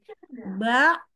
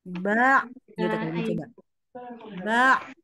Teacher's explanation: Kalau kita Letakkan telapak tangan ke depan mulut maka tidak keluar hembusan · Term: Ain